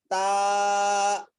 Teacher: اس کے بعد والا حرف ہے تا، تا ادا ہوتا ہے ہماری زبان جو ہے، اس زبان کے کور کو اوپر کے دانتوں کی طرف ہم جب لگائیں گے تو وہاں سے تا ادا ہوتا ہے۔ زبان کی نوک اور سامنے کے جو اوپر والے دو دانت ہیں اس کی جڑ میں جب ہم زبان لگائیں گے تو وہاں سے تا